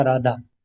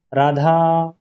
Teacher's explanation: जैसे हम किसी को बुलाते हैं तब बीच में जो स्वर है उसको थोड़ा सा ज्यादा समय देते हैं उच्चारण में, तो हम प्लुत स्वर का इस्तेमाल कर रहे हैं।